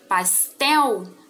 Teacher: Pastel, sílaba tônica, tel. Ela é uma palavra oxítona.